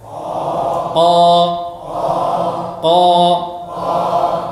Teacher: Perhatikan pangkal lidah meninggi. Ya. Pangkal lidah meninggi. Perhatikan di sini, meninggi pangkal lidah. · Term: isti'la